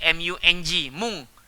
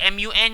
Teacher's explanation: kalau nun mati dan juga tanwin bertemu huruf kaf dan juga qaf, maka dia akan berubah menjadi ng